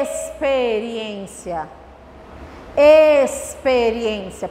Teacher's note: O X com o som de S, a gente vai fazer quando ele vem antes da letra P. Então, significa que o X vai vir antes do P.